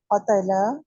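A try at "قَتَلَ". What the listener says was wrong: नहीं खींचे ना, आखिरी हर्फ को ना खींचे।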